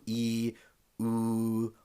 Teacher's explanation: with these vowels the tongue remains in one position when we're pronouncing them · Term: monophthongs